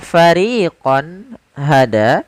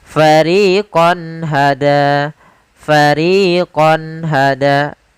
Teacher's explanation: ada fathatain atau tanwin bertemu dengan ha, maka suara konnya harus jelas, tidak boleh ditahan dengan gunnah. Karena izhar adalah menjelaskan, menampakkan suara nun sukun dan tanwin dengan jelas tanpa disertai gunnah.